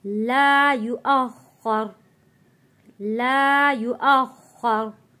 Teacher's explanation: यहाँ पे खौ मोटा पढ़ेंगे, खौ के ऊपर ज़बर है और खौ के ऊपर तशदीद भी है। हमज़ा खौ ज़बर अ, खौ ज़बर खौ, अख़ युअख़्ख़रु।